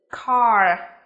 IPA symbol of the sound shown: k